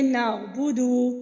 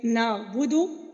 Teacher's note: اگر ہم صرف پیش کو ہی لمبا کر دیں گے نعبدو، تو اس کی جگہ وہ کیا بن جائے گا؟ وہ واو مدہ بن جائے گی